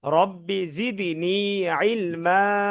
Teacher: রব্বিটা টান হবে না, রব্বি দ্রুত।